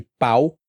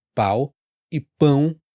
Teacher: você tem palavras que tem semelhança e a diferença é exatamente a nasalidade